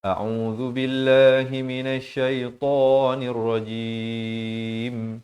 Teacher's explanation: A makhrajnya di pangkal kerongkong, ain makhrajnya di pertengahan kerongkong.